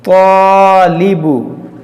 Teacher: طا الف زبر طا لام زیر لی طالی با پیش بو طالبو. یہاں پر دیکھیں الف سے پہلے موٹا حرف ہے, تو اس الف کو موٹا پڑھیں گے